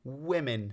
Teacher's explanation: we can still hear the I sound that is still a relic from the time when it was weave man